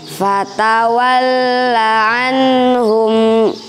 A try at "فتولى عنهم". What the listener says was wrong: اللام أريد أن أسمع لامين أنت صح أتيت بلامين لكن ما أدري كيف صح الصوت.